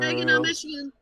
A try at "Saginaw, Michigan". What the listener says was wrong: No. No, it's like you forced it up. Say it with me. Saginaw, Michigan.